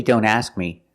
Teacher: when you say don't ask me don't drop the K completely we need to make the position of the k but we don't release the sound